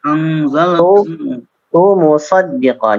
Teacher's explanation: Jadi huruf ta ya, tu ke mim ya, harus agak cepat sehingga ta-nya tidak dipanjangkan